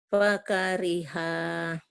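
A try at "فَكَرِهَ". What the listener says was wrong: Fa. Fa. Nggak ada yang panjang. Nggak ada yang panjang. Kayak orang Judes Bu. Fakariha.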